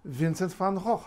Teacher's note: remember the V becomes f after that t